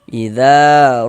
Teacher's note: idza mad thobi'i panjang dua harakat.